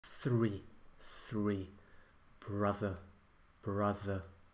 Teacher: I was just practicing the th sound, the interdental fricative.